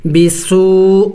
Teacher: سین سیٹی والے حروف میں سے ہے، پڑھتے وقت منہ سے سیٹی کی آواز نکلنی چاہیے